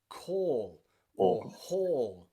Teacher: It's that really, really long vowel sound, very long in English